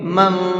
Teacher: اس نون کے اندر اخفا کریں گے، تھوڑی دیر آواز کو ناک میں روکیں گے، من، اس طرح سے، اس لیے کہ یہاں پر نون ساکن کے بعد میں کاف آ رہا ہے، اور کاف اخفا کے حرفوں میں سے ہے۔